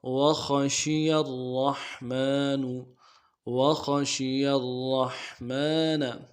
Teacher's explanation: خا کو موٹا کرنا ہے، شین کو واضح کرنا ہے